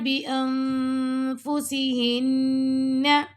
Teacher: أَزْوَاجًا يَتَرَبَّصْنَ بِأَنفُسِهِنَّ، اب یہاں پہ دیکھیں نون ساکن کے بعد آ رہا ہے یہاں پہ فا، تو یہاں پہ ہم اخفا کریں گے، اور فا کے مخرج کے پاس نون کی آواز کو چھپانا ہے، اور یہاں پہ لاسٹ میں غنہ ہو رہا ہے ہن پہ۔